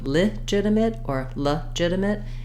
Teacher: both these words are stressed on the second syllable ji and letter G says the J sound I've Rewritten that